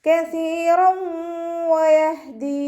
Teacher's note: റോ ഫതഹ തെൻവീന് വന്നു, തെൻവീനിന് ശേഷം ഇദാം ബൗനയുടെ അക്ഷരമായിട്ടുള്ള വാവ് വന്നു. തെൻവീനിനെ വാവിലേക്ക് ലയിപ്പിച്ച് ഉന്നയോടുകൂടി ഓതി കൊടുക്കുക, മണിച്ചിട്ട് ഓതി കൊടുക്കുക